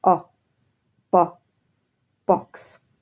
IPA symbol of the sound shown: ɒ